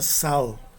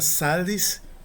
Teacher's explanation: Em L, um exemplo dessa exceção é a palavra sal, que significa sal e tem o a alongado no nominativo singular, é uma palavra masculina.